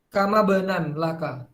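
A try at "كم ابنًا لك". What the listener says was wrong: Jadi harokatnya kasrah ya.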